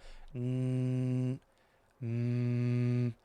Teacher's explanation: Ghunnah, it's a nasal sound when you push air through your nose like these sounds.